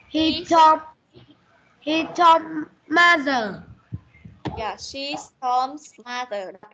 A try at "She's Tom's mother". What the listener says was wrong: Yeah, she's Tom's mother. Đọc cho đúng nhá. She's Tom's mother. Âm S này. She's Tom's mother.